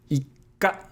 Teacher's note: So there is a pause or a double consonant · you're doubling the K sound because that's the consonant following the small tsu